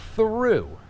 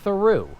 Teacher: Now you'll notice that through has less of a vibration, but it is still a voiced TH.